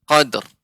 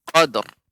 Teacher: qalqalah dan ro-nya dibaca dengan tebal